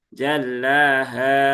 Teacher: Tapi haknya jangan panjang-panjang ya. Jallaha. Cukup dua aja.